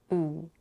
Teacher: she pronounces the heightened oo vowel in its pure quality.